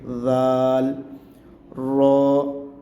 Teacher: سا کا جیسے ہم نے پڑھا تھا اوپر والے دو دانتوں کے پیچھے زبان لگا کے، اسی طرح زال کو ادا کریں گے اوپر والے دو دانتوں کے پیچھے زبان لگا کے۔